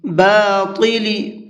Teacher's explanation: طا کو منہ بھر کے پڑھیں گے